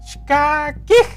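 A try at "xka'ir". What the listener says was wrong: No es kakij, es shka'ir. Como cuando tú tomas agua. ¿Tú has tomado agua? Vale, ¿cómo haces cuando tú tomas agua? Exactamente, así haces. Así se hace. Haces shka'ir.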